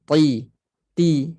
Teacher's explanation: ta dia hanya guna hujung lidah makhraj ta dengan Ta sama hujung lidah sentuh pada belakang pangkal gigi atas dekat akar gusi